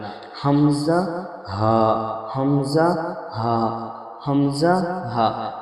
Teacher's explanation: কণ্ঠনালীর প্রথম হইতে উচ্চারণ হবে · 1 নম্বর মাখরাজ, হালাক বা কণ্ঠনালীর শুরু হইতে উচ্চারণ হয় হামজা হা। এটা কোনো পেশার, কোনো জোর এই অক্ষরের মধ্যে 1 নম্বর মাখরাজের মধ্যে চলবে না।